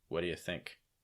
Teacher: And your stress is on think.